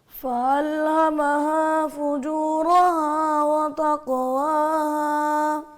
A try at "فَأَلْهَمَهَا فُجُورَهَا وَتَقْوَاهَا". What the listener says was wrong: بس ناک سے پرہیز کریں, ناک بنا لی جائیں, آواز گھرنے کی نہ ہو.